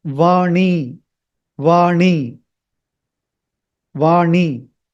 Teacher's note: It should not touch the teeth. It is just after the hard palate is over and just before the teeth starts. There is a ridge, that is where you have to touch it. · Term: the retroflex